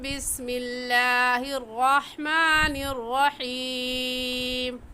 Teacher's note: را موٹا ہے کیونکہ را کے اوپر زبر ہے اور ہا حلق کے درمیانی حصے سے نکلتی ہے